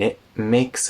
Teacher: before the m in makes the t turns into a glottal stop